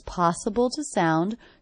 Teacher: the word to is definitely reduced to the schwah. So I may mark that so I don't forget to reduce it.